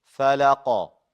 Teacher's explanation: Keep those light. The qaf is heavy with qalqala.